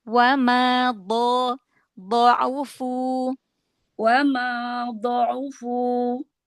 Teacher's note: mundurkan lagi makhraj Do. Sisi lidah lagi.